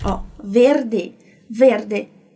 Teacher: no italiano, a gente não pode apagar aquele E final.